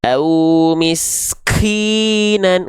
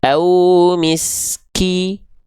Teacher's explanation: huruf kaf itu bukan mengalir nafas sifat hamsnya, tapi hanya berupa percikan nafas saja. Ya udah, tinggal dipercikan aja, jangan sampai berlebihan.